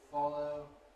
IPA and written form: ˈfɒləʊ (follow)